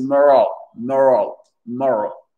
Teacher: Le O devient une sorte de AE.